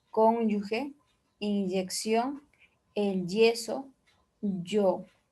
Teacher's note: El primero es detrás del nasal lateral y su pronunciación se va a hacer enfático. Es un fricativo palatal sonoro.